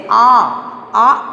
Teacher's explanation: इसका उच्चारण करते समय दो मात्रा के बराबर का समय हमें लगता है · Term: दीर्घ स्वर